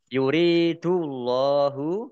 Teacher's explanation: ro kasroh ya sukun mat tobi'i panjang 2 harokat. Allahnya dibaca tebal karena harokat di depannya dhammah.